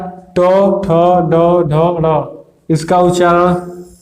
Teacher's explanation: इसका उच्चारण मूर्धा से होता है, मूर्धा।